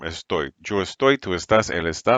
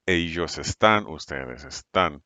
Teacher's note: the stress is on the final syllable